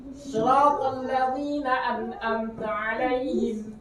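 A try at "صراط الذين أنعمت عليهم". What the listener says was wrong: Pakai ain, yang amnya pakai ain. Nah, an-am. Ain yang keduanya. Siratal ladzi.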